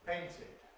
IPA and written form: ˈpeɪntɪd (painted)